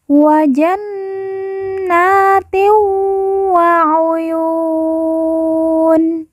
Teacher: Kemudian yu kita baca panjang 2, 4 atau 6 harokat karena di depannya terdapat huruf wawu sukun atau wawu mati sebelum huruf pemberhentian, yaitu huruf nun. Kemudian nun di ujung kita sukunkan atau kita matikan karena waqaf atau berhenti.